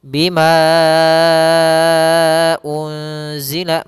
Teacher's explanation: Nah, ini untuk panjang mad jaiz sendiri adalah 4 harokat. Maka kita panjangkan ma-nya 4 harokat baru dibaca u-nya. Bima unzila, meskipun nanti ada beberapa riwayat mengatakan 5, tapi kalau dalam periwayatan yang banyak dipakai adalah al-masyhur itu 4 harokatnya. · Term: mad jaiz munfasil